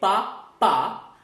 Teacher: I'm using my lips to produce this sound. So I'm not using my vocal cords. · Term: voiceless sound